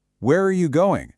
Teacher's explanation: Again, the pitch drops at the end. That drop is a clear signal to the listener that your thought is completely finished. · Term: falling intonation